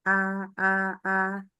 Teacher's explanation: pangkal lidah turun infitah lidah dengan langit-langit mulut terpisah terbuka ya